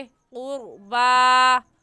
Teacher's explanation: वलिज़िल क़ुरबा, रा साकिन आ गया, रा साकिन से पहले पेश है तो रा साकिन को पुर यानी मोटा करेंगे। ऐसे कहेंगे क़ुरबा, खड़ी ज़बर है, एक अलिफ की मिक़दार खींचेंगे।